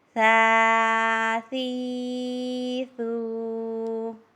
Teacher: اب ثا کو نرمی کے ساتھ پڑھنا ہے، اس میں سیٹی کی آواز نہ آئے۔